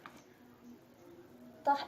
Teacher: the place of articulation alveolar, manner of articulation plosive.